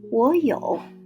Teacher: the first character will change its tone from the third to something like the second tone, like 我有. If we pronounce the word in its original tones, the 2 third tones, it will sound like 我有.